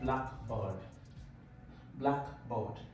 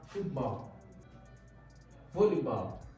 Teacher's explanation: The stress will always be on the first word. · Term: compound words